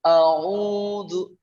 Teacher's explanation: Ketika u berarti ada wawu di sana ya, ada bunyi wawu. Berarti itu dibantu sama bibir.